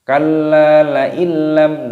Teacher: nun sukun bertemu dengan lam, idgham bila gunnah. Idgham itu artinya memasukkan bila gunnah tanpa berdengung.